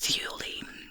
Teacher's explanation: pronounced Thule, with the stress on the first syllable